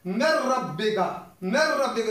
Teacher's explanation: نون ساکن کے بعد را آ گیا تو ہم نون ساکن کو نہیں پڑھیں گے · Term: ادغام بغیر غنہ